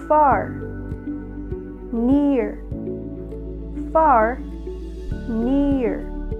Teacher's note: far has one vowel quality while near it has two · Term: diphthongs